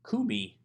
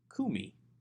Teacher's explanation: the accent has actually shifted to the first syllable away from the second syllable